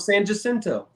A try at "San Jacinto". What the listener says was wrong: Isn't it San Jacinto? Jacinto? I don't think you pronounce the J.